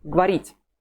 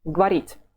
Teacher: The ending ye has the quantitative reduction. We really hear much less of it.